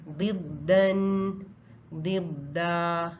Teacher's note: दा बारीक है, दा को मोटा नहीं करेंगे।